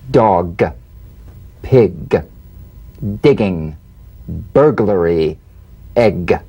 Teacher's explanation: You'll feel a crisp tap and a voiced pulsation of the back of the tongue.